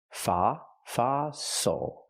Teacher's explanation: Use the open ah sound, like hot and stop for the O.